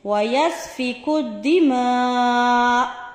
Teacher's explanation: ویسفک الدماء، آ کو زبر کو جب ہم یہاں پر وقف کریں گے تو پھر آ نہیں پڑھیں گے، صرف ہلکی سی آ کی آواز محسوس ہونی چاہیے